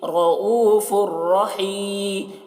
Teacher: را کو پور پڑھ رہے ہیں کیونکہ را کے اوپر زبر ہے. یہ او یہاں پر واو مدہ ہے, تھوڑا کھینچ رہے ہیں.